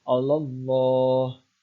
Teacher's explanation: maka membacanya adalah ditafkhimkan atau membacanya tebal